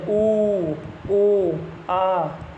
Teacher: वृत्तामुखी में हमारा होठ पूरा ही गोल हो जाता है।